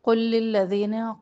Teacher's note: قل قاف کو موٹا پڑھنا ہے، قاف کے پیش کو لام تشدید سے ملانا ہے، درمیان میں لام ساکن لام مشدد میں مدغم ہو جائے گا۔